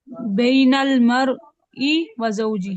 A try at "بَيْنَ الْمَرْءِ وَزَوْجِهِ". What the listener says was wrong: نہ ای پہ بھی نہ رکو، ڈائریکٹ پڑھو، بین المرء وزوجه، کیسے؟